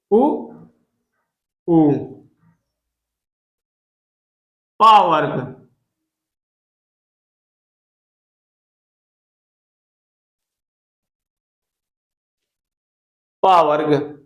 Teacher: ओष्ठ के अंतर्गत वे वर्ण आते हैं जिनका उच्चारण दोनों ओठों के स्पर्श से होता है।